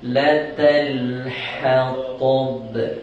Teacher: kita jumpa dengan huruf ha nipis, kemudian jumpa dengan ta. Ta ni tebal. Kadang-kadang ada yang sapu sekali terus, jadi tebal dua.